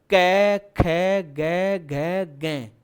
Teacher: कंठ से सीधी ध्वनि बाहर क वर्ग की तो कंठ्य वर्ण